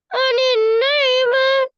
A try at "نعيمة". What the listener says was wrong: நாயிமா சரி இப்ப பிரச்சனைக்கு வருவோம் அப்ப இந்த யா இடத்துக்கு வந்துக்குது நாயிமாண்டா அந்த யா தேவையில்லையே கடைசியில என்ன கடைசியில ஒரு இந்த குண்டு தான் ஒன்று வந்து இது அப்படியா மீமுக்கு போறோம்